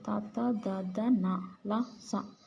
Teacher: దంత్యములు దంతాల సహాయం చేత పలుకబడతాయి.